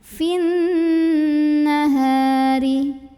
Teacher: Nah, tapi dibaca panjang 2 harokatnya hanya ketika berhenti saja. Sedangkan kalau wasol atau melanjutkan bacaan, mad tabi'inya gugur, fi-nya dibaca pendek, langsung masuk ke nun. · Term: takhallus bil hadfi